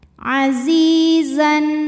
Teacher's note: Mad tabi'i dhahiri karena ada ya sukun didahului baris kasrah. Maka huruf zai panjang 2 harokat. Azizan. Kemudian ada hukum idhar halqi karena ada tanwin fathah menghadapi huruf halqi atau huruf tenggorokan yaitu ha, maka tanwin dibaca jelas.